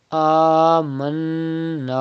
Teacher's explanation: First stretch khada zabar on hamza and then do gunna in noon mushaddad. After that stretch alif madda up to 2 harkat.